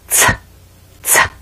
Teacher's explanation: a common challenge in making this sound is when the speaker uses the blade of the tongue or the top of the tongue and presses it against the front of the teeth this creates a very splashy t sound